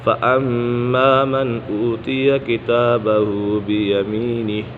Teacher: میم مشدد ہے، میم مشدد میں غنہ ہوتا ہے